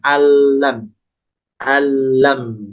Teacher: maka lamnya tidak terlalu lama cukup ketukan kedua sudah pindah · mimnya dibaca dengan jelas tanpa ada pantulan. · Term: idgham bilahunah